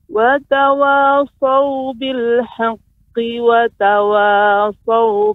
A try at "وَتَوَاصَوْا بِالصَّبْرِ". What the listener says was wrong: Dengan tapi saya belum mendengar shotnya ini lebih banyak, mungkin karena mic ataupun ya kita dengan jarak jauh. Huruf shot ini dia harus mengeluarkan shafir. Kan kita tadi sudah belajar sifat shot adalah shafir, tajam.